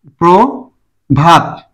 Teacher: একটা মুক্ত অক্ষর একটা বধক্ষর প্রটা অনেকক্ষণ ধরে উচ্চারণ করা যায় মুক্তাক্ষর আর ভাত বধক্ষর